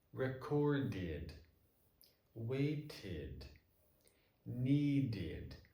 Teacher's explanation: if the sound before the ed is a t or a d, like in these 3 words, then it's going to sound like id